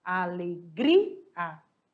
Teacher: Aí a gente vai lá na regrinha dos ditongos e hiatos. A alegria, ela é uma llana, porque ela vai separar o I e o A.